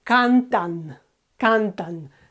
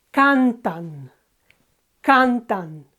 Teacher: Okay, so we have two syllables here, can and tan. It ends with an N, and again, it's the penultimate syllable that is accentuated.